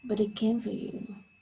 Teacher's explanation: the t of it because it is at the end of the syllable becomes a stop t sound